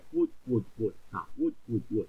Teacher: 生活嗱，活咧系入声嚟噶，咁系第九声